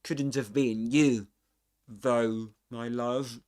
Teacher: So the T gets linked to the next vowel sound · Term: catenation